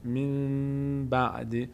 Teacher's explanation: نون بعدش با تبدیل میشه به میم، نون خوانده نمیشه، میم تلفظ میشه. من بعد. البته در هنگام تلفظش دقت کنید که میم نچسبه، میم لبها رو نمیچسبونیم به هم، مقدار لبها رو در هنگام تلفظ این میم فاصله میدیم به اندازه که کاغذ بین دو لب جا بشه.